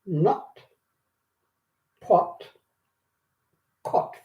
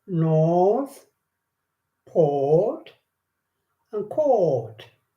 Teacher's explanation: So So usually we've got the R in there. So instead of saying R, we keep that silent and we keep the O longer, pronounce that longer. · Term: long o